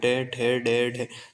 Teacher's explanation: इसकी जो आवाज है वो मूर्धा से आएगी। मतलब मुंह के भीतर की छत पर अगला भाग।